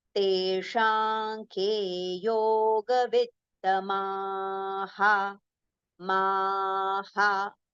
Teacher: So ma, so the visarga sound will be ha. But then ma we have to prolong and ha we have to take quickly.